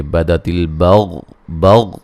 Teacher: اچھا جی قد قاف کو موٹا ادا کریں گے، دال کو ہلا کے پڑھیں گے، بدت البغضاء یہاں غین کو موٹا ادا کریں گے لیکن ہلانا نہیں ہے، غاد کو بھی موٹا ادا کریں گے اور یہ مد واجب ہے.